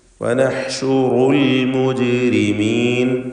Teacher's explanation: ജീബിൻ്റെ സുക്കൂൻ ഖൽഖല സുഗ്റ നൽകി ഹറക്കത്ത് പോലെ ശബ്ദം ചലിപ്പിച്ച് വ്യക്തമാക്കണം